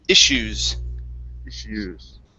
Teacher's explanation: So this double S here, this is going to be an SH sound